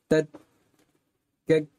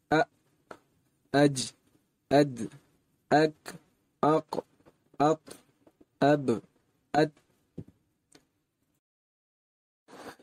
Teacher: آواز مخرج میں پوری طرح گھر رہی ہے اور آن کی آن میں یعنی فوراً آواز بند ہو رہی ہے، باوجود کوشش کے ہم آواز کو جاری نہیں رکھ پائیں گے۔ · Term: حروف شدیدہ